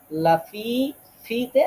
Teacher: ফা উচ্চারণ হবে নিচের ঠোটের পেট উপরে দাঁতের আগা